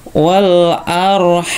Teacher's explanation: Wal ra-nya dibaca tebal ya. Ra-nya dibaca tebal karena depannya harokat fathah juga ya. Kalau tadi lamnya dibaca tebal, ini ra-nya juga dibaca tebal ya.